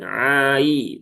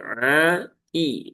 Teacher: dibaca panjang empat harakat. A i dan hamzahnya harus jelas ya, jangan ai tapi a i.